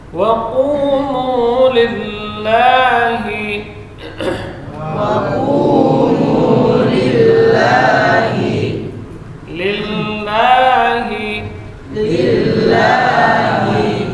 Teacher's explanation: Lafzul jalalah dibaca tipis karena sebelumnya kasrah. Lillahi ha huruf hamas dan rakhawah jelas ya. Keluar dari pangkal tenggorokan.